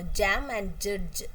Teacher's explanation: it's palato-alveolar because the tongue touches both the hard palate and the tooth ridge. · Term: palato-alveolar affricates, voiced sound